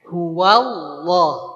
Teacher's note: Si mulutnya tidak monyong tetap ngebuka pangkal lidah kita yang diangkat. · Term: ditebalkan